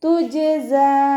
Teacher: ജിമ് കൽക്കലയുടെ letter ആയതുകൊണ്ട് full സുക്കൂന് കൊടുക്കുക.